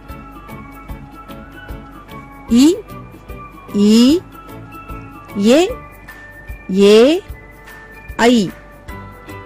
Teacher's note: இவை 5 வாய் திறக்கும் முயற்சியுடன் நாக்கின் அடி ஓரமானது மேல்வாய் பற்களை தொடுவதால் பிறக்கின்றன